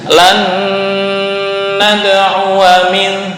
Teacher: ini dibaca dengung, yaitu idgham bi gunnah. Nun mati bertemu dengan nun.